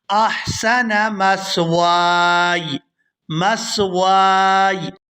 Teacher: واؤ کو الف مدہ کی وجہ سے کھینچتے ہوئے یا ساکن کے ساتھ ملائیں گے احسن مثواي، مثواي، یعنی یہاں پر ہم یا کو ادا کرتے ہوئے اس کی آواز کو کلیئر کریں گے مثواي، ربی احسن مثواي۔